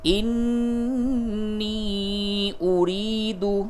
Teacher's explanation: نون مشدد غنہ ہوگا، پھر مد کیجئے اور یا مدہ اس کو تھوڑا سا کھینچیے